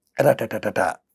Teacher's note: the syllables are produced in a steady flow, resulting in a machine gun effect, a syllable-timed rhythm